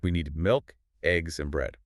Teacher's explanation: Rise, rise, fall. That pattern is a signal to the listener that says, Hey, more is coming.